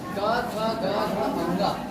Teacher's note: तो आप देखिए क फिर ख फिर ग फिर घ फिर अंगा गले से निकल रहा है।